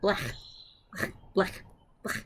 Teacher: It's a palatal fricative. So we're making it back there. With fricative means that things are touching each other, that it's moving and making a sound there on your palate, on the top of your mouth. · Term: chet